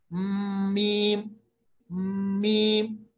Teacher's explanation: मीम को पढ़ते वक्त होंठों के खुश्क वाले हिस्से को मिलाना है